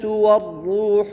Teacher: والروح باریک را کو موٹا پڑھیں گے، اس لیے کہ را کے اوپر ضمہ ہے